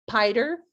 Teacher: a child saying like pider for spider so they're kind of eliminating one of those sounds in that speech buddy blend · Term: blends